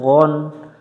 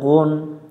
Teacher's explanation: অক্ষরটা দেখতে আইনের মত পার্থক্য একটা নক্তা আছে মাখরাজটা একবারেই সহজ জিহব্বার গোড়া থেকে এটা আমরা মোটা করে পড়বো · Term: গাইন